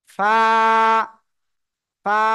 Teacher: এক আলিফ টানিয়া হালকা বাতাস বের করিয়া উচ্চারণ করিতে হবে ঠিক আছে ফা ফা হালকা বাতাস বের হচ্ছে কিনা দেখেন ফা · দুই দাঁতের সাথে লাগিয়ে ঠোঁটের পেট সামনে উপরে দুই দাঁতের সাথে নিচের ঠোঁটের পেট সামনের উপরের দুই দাঁতের আগার সাথে লাগিয়ে এক আলিফ টানিয়া হালকা বাতাস বের করিয়া উচ্চারণ করিতে হবে